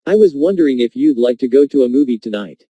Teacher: John is nervous and does not want to appear too direct or bold. Notice how the question goes up at the end, which shows that he is not overly confident.